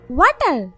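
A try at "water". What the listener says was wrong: ওয়াটার না, এটা ওয়াতার, ওয়াতার। জিভার আগে সামনে দুই দাঁতের সাথে লাগবে, ওয়াতার, ওয়াতার।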